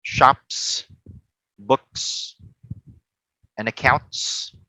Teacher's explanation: So the p, the k, and the t sound, okay, are voiceless.